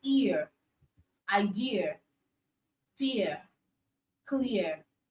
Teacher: That's the combination of letter I and schwa sound. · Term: sound ear